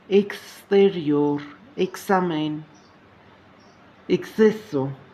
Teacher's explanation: X հնչյունը արտասանվում է հայերեն կս հնչյունակապակցությամբ